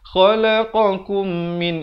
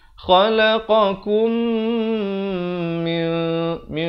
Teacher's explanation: Di sini mim mati bertemu mim, hukumnya idgham mislan saghir, didengungkan dua harakat